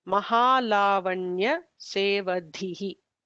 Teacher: The last dha is a Mahaprana dha.